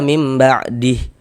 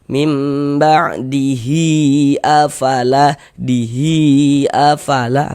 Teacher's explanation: baru hi dibaca panjang dengan 2 harokat. Karena mad silah qasirah itu panjangnya dia 2 harokat.